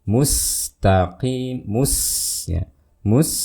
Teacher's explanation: sin sukun karena sifatnya rokhwa, kita tahan suaranya. Mus, mus, itu ya, jangan mus, mus, tapi ditahan.